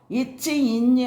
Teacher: இரண்டு மெய்களும் நாவின் இடைப்பகுதி நடு அன்னத்தின் இடைப்பகுதியை பொருந்துவதால் பிறக்கின்றன அன்னம் அப்படின்னு சொல்றது மேல்வாய்தான் அந்த மேல்வாய நாவின் இடைப்பகுதி போய் பொருந்துறதுனால பொறக்குது.